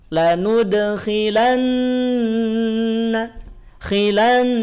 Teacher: tahan dua harakat dan kadar dua harakat pada ghunah itu lebih panjang dibanding dengan kadar harakat pada Mad asli